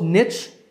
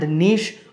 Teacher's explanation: The traditional pronunciation of this word is /nich/ but due to influences from other languages like French, /neesh/ has become more popular.